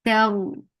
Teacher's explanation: For fatha open jaws attached with ra. Ra will get sifa of tawassut, and it will be heavy because there is fatha before it.